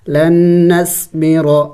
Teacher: نون ساکن کو ہم نہیں پڑھیں گے بلکہ لام کو نون مشدد کے ساتھ ملائیں گے